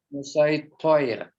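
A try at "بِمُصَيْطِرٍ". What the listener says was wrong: Toir. Jangan ada huruf o-nya. Toir. Itu dia.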